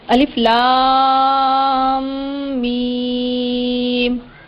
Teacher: तो ये हुरूफ मुक़त्तआत में है, और इनको भी ये जिन पे मद जो अलामत दी गई है मद की, उसको 5-5 अलिफ की मिकदार के बराबर खींच कर पढ़ते हैं।